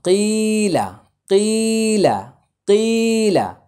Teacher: কফের উচ্চারণ কিছুতেই হলকের মাঝখানে যাবে না, জিব্বার গোড়া থেকে। কফ হচ্ছে 4 নম্বর মাখরাজ, জিব্বার গোড়া, তারপর উপরে তালুর সঙ্গে লাগিয়ে উচ্চারিত হবে।